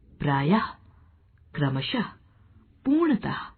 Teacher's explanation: विसर्ग का उच्चारण हल्के ह के समान होता है